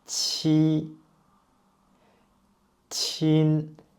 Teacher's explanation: Qi is an aspirated consonant, and you can use the same minor G to pronounce this one.